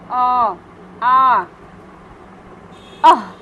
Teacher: जो विसर्ग है वो भी कंठ से निकलती है